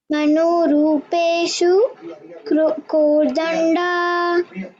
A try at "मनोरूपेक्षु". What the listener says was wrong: And not rupeshu. It is rupekshu.